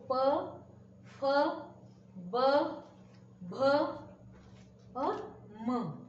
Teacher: हम उपयोग में ला रहे हैं अपने ओठों को, तो इसलिए उसका नाम है ओष्ठ।